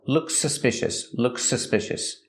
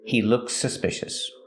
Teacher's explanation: We only hear one S sound. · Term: link the words